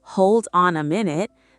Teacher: The D flows into the O. The N flows into the A. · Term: linking